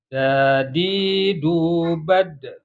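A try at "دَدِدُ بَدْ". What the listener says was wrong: Bade, jangan ditahan. Dadidu bade.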